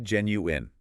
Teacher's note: No wine at the end. It's a short, clipped-in sound.